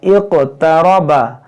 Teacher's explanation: इक़्तरबा और रा को मोटा पढ़ेंगे क्योंकि ज़बर है। यहाँ नून में गुन्ना करेंगे।